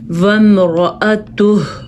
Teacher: را کو پر پڑھنا ہے، ہا کی آواز آنی چاہیے